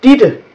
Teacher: And then we have, whenever in Danish you use a double T, when you use T 2 times in a row, it is actually pronounced as a D, like my name, Ditte, D-I-T-T-E, Ditte.